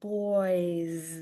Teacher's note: add an S and it sounds like a Z too